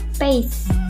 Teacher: Bunyi aspirasi, yaitu bunyi sertaan yang dihasilkan dengan cara arus udara yang keluar lewat mulut terlalu keras sehingga terdengar bunyi KH. Contoh bunyi P pada awal kata bahasa Inggris pace terdengar sebagai bunyi PH sehingga ucapannya menjadi pace.